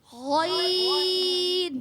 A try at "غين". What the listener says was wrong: আরো মোটা হবে, গ।